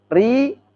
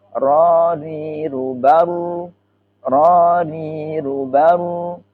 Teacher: Kalau ri meringis tipis, istifal tipis tarkik. Kalau ro dan ru tafkhim, mecucu.